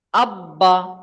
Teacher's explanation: এখানে বা দুবার উচ্চারণ হবে, বায়ের উপরে তাসদিদ আছে, বা দুবার উচ্চারণ হবে, একবার হামজার সাথে মিলিয়ে হবে, আর একবার নিজে নিজে হবে। তাহলে হামজা বা জাবার আব, আর বা জাবার বা, আব্বা।